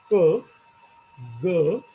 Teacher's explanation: you will realise that there is some movement at the back part of your tongue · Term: वेला साऊंड